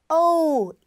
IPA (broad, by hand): oʊ